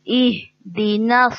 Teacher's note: ہا جو ہے وہ سینے سے نکلے گا, مطلب کہ ہمارے حلق کے آخری حصے سے. تو اس کو واضح کریں گے.